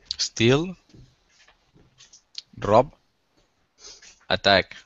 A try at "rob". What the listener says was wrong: Rob or? Careful with the rolling R. Rob.